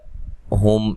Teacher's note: ہم میم ساکن کا اظہار ہے، غنہ نہیں کریں گے